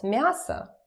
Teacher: it's about vowel reduction so when it's not stressed it turns to uh